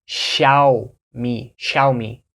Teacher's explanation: you open your mouth more in the first part